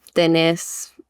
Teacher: the accent is on the vowel at like the end of the word